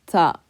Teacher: You're using the tip of your tongue, ta, right behind the front teeth on the top. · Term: the letter ta